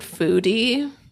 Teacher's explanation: that vocal fry kicked in